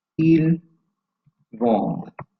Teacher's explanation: silent ending, therefore the consonant is the last sound we hear